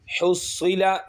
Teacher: صاد موٹا حرفوں میں سے ہے، حروف مستعلیہ میں سے ہے تو ہم موٹا کر کے پڑھیں گے۔